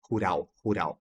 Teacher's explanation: Ele vem com o ru, que arranha aqui a garganta, como em rato, e tem oral, que é o que vem no céu da boca, né?